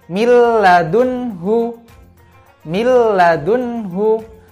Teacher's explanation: nun sukun tersebut hilang · Tapi tulisannya bukan langsung milladunhu, tapi tulisannya min ladunhu. Karena non sukun ketemu huruf lam, maka non sukun tersebut hilang, maka langsung dibaca milladunhu. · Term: idgham bila gunnah